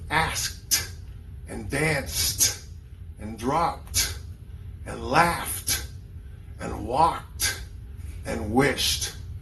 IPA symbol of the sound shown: t